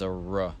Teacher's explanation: There's also a third sound that's neither of these, even though it sounds more similar to the rhotic one, and that is the molar rhotic, which is a R. The molar R is done by sort of bunching up the tongue in the back of your mouth, and it's almost impossible to tell the difference between a retroflex and a molar R in practice because they're both articulated at the same place.